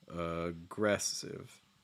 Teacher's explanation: at the very end specifically the last syllable aggressive i'm hearing more of a fall